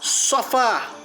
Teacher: Sofá, oxítona. Sílaba forte é fá, é a última sílaba. Oxítona terminada em a.